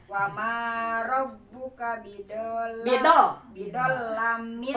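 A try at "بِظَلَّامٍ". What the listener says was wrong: Lana panjangkeun bidol lamil. Langsung tekan ya bidol. Bidol lana panjangkeun lamil. Lana panjangkeun bidol la kan matobi. Bidol la ya.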